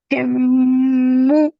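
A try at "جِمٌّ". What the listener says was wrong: Very good. Excellent.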